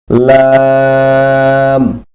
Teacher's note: জিহ্বার আগার কিনারা সামনের উপরের দাঁতের মারির সঙ্গে লাগাইয়া